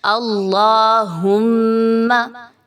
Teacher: میم پر میم مشدد کا غنہ، آواز کو ناک میں لے کے جائیے